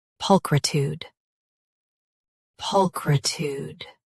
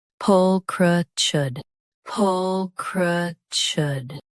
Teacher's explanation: US ends with tude. UK ends with chude. Don't say tude in UK.